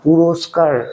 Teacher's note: র এর উচ্চারণ শেষ র এর সঙ্গে কিন্তু অ আসছে না